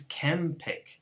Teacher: The N becomes bilabial in order to match the following bilabial stop.